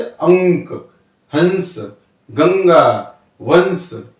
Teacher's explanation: इनके उच्चारण में हवा केवल नाक से निकलती है। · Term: अनुस्वार